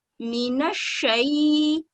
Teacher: नून को अच्छी तरह से शीन के साथ मिलाते हुए मजबूती से फतह को पढ़ते हुए और हाफ निस सर्कल में घुमाते हुए, मीनशई।